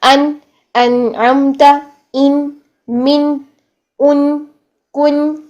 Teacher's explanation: नून को भी साकिन हालत में पढ़ते हैं तो सांस बंद हो जाता है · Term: नून की साकिन हालत